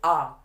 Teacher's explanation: जब हम आ का उच्चारण करते हैं तो जो हमारा मुंह है वह पूरा की पूरा खुल जाता है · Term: विव्रत स्वर